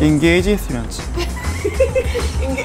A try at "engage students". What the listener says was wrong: Engage students. You kind of like, you put in an extra syllable. Engage? Students. Engage But it's only when you say them together. When you say them separately, it's perfect.